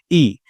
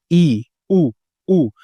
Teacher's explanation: ये वो स्वर होते हैं ध्यान दीजिएगा जिसमें वायु जो है इसका संकुचन जो है वो सबसे अधिक होता है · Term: संवृत स्वर